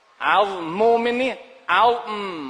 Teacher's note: Langsung karena mim ketemu mim, idgham jadi dengung. 'Azm didengungkan.